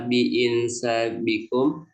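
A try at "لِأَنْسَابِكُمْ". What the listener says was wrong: Ladu hamzahnya di atas. Ladu hamzahnya di atas itu. La bi Jangan dibaca aja in la dipandu di hamzah di atas.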